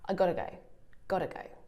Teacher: I'm almost saying it with a d sound.